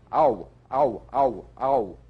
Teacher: Another diphthong, a combination of the largest lip opening, number five, ah, with the smallest, number one. Ooh. Again, using that quick American glide.